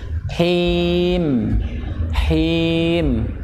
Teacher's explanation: Suaranya di tenggorokan tengah.